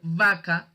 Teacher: se junta el labio con el diente y a esa B se le suele llamar B bidental